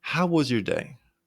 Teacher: Your voice goes slightly up, making it sound more engaging. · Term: rising pitch